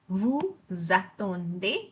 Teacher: the next word starts with a vowel. So I pronounce the s, but I don't say s, I say z. Vu zaton. See the z goes into the next word.